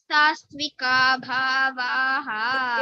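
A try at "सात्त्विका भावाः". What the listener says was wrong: எனக்கே அங்க சகாரம் கேக்குறது. ஏச்சைவ சாத்விகா பாவாஹ.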